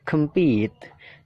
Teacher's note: jadi pitnya itu ditekan, kemnya itu kan dibaca pecel ya, kem ya, jadi singkat, kemnya singkat, compete, pitnya itu ditekankan.